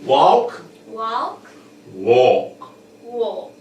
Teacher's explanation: almost like the l and the l is almost absent so we stay on the a as much as possible and then we go to the k